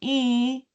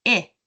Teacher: if I just open my mouth a little bit more, it changes from e to i